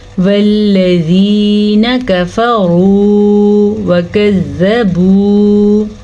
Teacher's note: واو ساکن سے پچھلے حرف کے اوپر پیش آ جائے تو اسے واو مدہ کہتے ہیں، اسے کھینچ کے پڑھتے ہیں